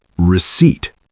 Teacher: 2 syllables, stress on the second.